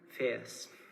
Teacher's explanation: in Ulster English a centering diphthong, and so the word is pronounced fierce